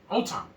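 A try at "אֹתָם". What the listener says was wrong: Don't, because when you say it like that, that implies that there's more words. You're going into another sentence.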